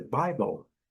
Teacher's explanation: nós temos aqui a primeira sílaba forte, a segunda bem fraquinha · L, lá no fundo mesmo do céu da boca, dark l